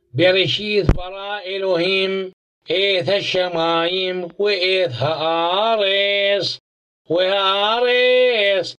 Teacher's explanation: the Vav is pronounced as a W instead of V